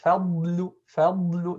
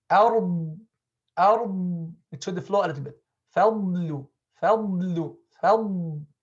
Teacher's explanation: The sound should remain in the mouth and come out from the mouth, not go to the nose at all. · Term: dad